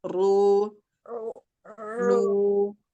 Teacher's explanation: Ro-nya dia mau tebal ya, karena dia berharokat dhammah gitu ya.